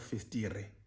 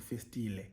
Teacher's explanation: So Xhosa people, especially like in the rural areas, could not pronounce the R. And so they replaced the R with the approximant L, which would mean instead of festire, it would be called festile.